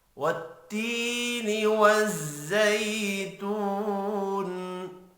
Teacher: والتی یا مدہ ہے، ایک الف کے برابر کھینچ کر پڑھیں گے۔